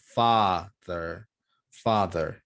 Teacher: you need to drop your jaw and you need to make a long ah